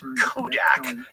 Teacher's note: comedy writers think of the k sound as being a comedy magnifier that's because it's a plosive